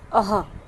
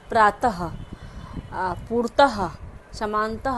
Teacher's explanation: विसर्ग के उच्चारण में कंठ से हल्के से ह के समान होता है।